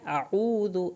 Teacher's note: الف اور عین کو علیحدہ علیحدہ پڑھنا ہے۔ اعوذ، واو ساکن کو کھینچے، ذال کی زبر کو پیش کو لمبا نہیں کرنا۔